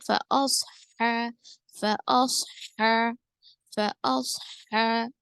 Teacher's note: صاد کو موٹا پڑھیں گے کیونکہ یہ حرف مستعلیہ میں سے ہے ، ہا پہ الف مدہ، ہا کا مخرج صحیح لیں گے، · ہا کا مخرج صحیح لیں گے، وسط الحلق، ٹھیک ہے، حلق کے درمیانی حصے سے ادا کریں گے